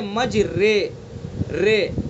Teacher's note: نہ زبر پڑھنا ہے نہ زیر پڑھنا ہے, بلکہ مجرے رے, یعنی جھکاؤ زیر کی طرف ہونا ہے تھوڑا سا, مجریہا. تو یہ ہوتا ہے امالہ.